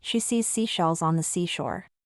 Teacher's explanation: The SH in she and shells needs your lips to round slightly, with the air passing gently over the tongue. The S in C's and seashells requires a narrower, sharper airflow, with your tongue closer to your teeth.